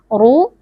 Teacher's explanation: huruf ro tebal baca dengan mengangkat pangkal lidah